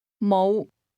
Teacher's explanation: Notice the low rising tone.